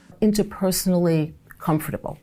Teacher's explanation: you actually can hear some US speakers use the full 4-syllable pronunciation